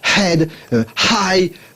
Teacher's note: un H qui vient de très loin, de très profondément dans la gorge